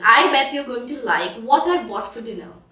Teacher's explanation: the T in what becomes a flat T sound, so it sounds like a D as it is surrounded by two vowels.